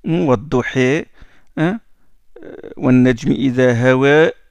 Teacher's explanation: Le alif dans l'origine est un ya. Certains qurra, ils prononcent, ils l'inclinent vers le i ou vers le ya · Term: l'inclinaison du alif